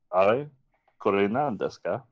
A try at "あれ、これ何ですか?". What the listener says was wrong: Oh, great, yeah.